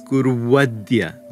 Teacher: Guru plus adya, meaning do it today, becomes guruvadya, where the ukara has become a wakara